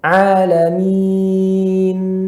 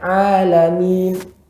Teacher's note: pada nunnya ada ya suara yang mengalir pada nun karena dia nun masuk gunnah